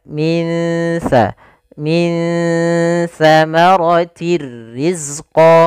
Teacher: nun sukun bertemu dengan huruf tsaitu cara membacanya samarkan nunnya kepada makhraj daripada huruf Ta makhraj Tsa adalah ujung lidah menempel dengan gigi serari kita maka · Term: Ikhfa, ikhfa